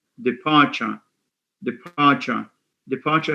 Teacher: departure has a schwa at the end